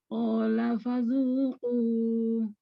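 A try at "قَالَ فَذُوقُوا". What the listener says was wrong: Oke, itu agak kepanjangan. 2 harokat saja. Panjang zu-nya sama dengan ko-nya.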